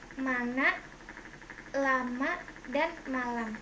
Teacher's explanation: Konsonan P, kriterianya bunyi bilabial, hambat tak bersuara, contoh katanya pita, apa, dan tetap. Konsonan M, kriterianya bunyi bilabial, masal bersuara